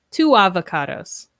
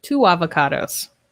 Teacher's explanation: with two avocados we link the sounds with wha two avocados so it's almost like we have a w sound in there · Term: linking to vowel sounds